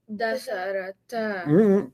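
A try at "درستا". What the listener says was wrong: Keep the letters in order. Darasa. Darasa. Darasata. Darasata. Darasata.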